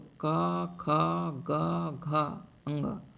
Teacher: क वर्ग के उच्चारण स्थान कंठ है।